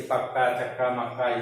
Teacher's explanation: यानी जब दो असमान ध्वनियां मिले, सॉरी, जब दो समान ध्वनियां मिलेंगी, यानी जैसे का और का, जब दो समान व्यंजन ध्वनि आपस में मिलती है तब उन्हें द्वैत व्यंजन कहते हैं।